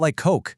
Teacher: The two K sounds just melt into one long one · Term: lengthening